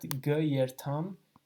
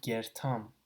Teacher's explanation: ga yertam is lumped together into gertam. So you drop the sound, and you basically, these two words almost are pronounced as one word, gertam. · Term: contraction